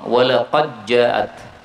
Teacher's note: Dal ketemu Jim boleh idgham walaqad jaat rusuluna Sin boleh sukun rusluna qala Salamun boleh dibaca